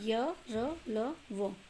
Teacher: इनका उच्चारण जीभ, तालु, दांत और ओंठों के निकट आने से होता है, किंतु श्वास में रुकावट कम होती है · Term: अंतस्थ व्यंजन